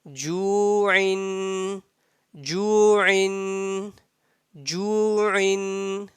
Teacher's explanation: When you see zamma before the wow, at that time you have to stretch it for 1 second. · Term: wow madda